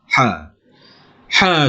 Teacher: ha tu dia bukan keluar daripada mulut kita, dia keluar daripada kita punya tekak ni